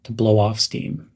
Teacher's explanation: reduce your emphasis of the word off keep it light and quick